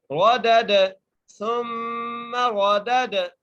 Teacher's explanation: دال کو دال سے ملایا اور دوسرے دال پر قلقلہ کیا